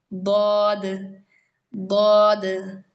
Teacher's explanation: നാവിന്റെ വശങ്ങൾ മേലുള്ള അണപ്പല്ലിന് പ്രസ് ആവും. എന്നിട്ട് ഈ ഫ്രണ്ടുള്ള ഭാഗം അണ്ണാക്കിലായിരിക്കും ഉണ്ടാവുക. ദ്വാദ്. അപ്പോൾ ചില പണ്ഡിതന്മാർ പറഞ്ഞ് നിങ്ങൾക്ക് ഒരു സൈഡ് മാത്രം യൂസ് ചെയ്താൽ മതി.